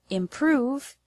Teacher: The word improve has the stress on the second syllable, prove.